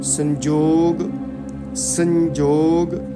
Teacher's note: ਸ ਦੀ ਆਵਾਜ਼ ਨਾਸਕਾ ਚੋਂ ਆਏਗੀ